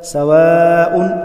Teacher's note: مد متصل واجب ہے 5 الف کے برابر کھینچ کر پڑھا جائے گا